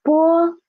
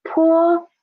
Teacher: only difference is the air coming out of your mouth so poor softer air poor stronger air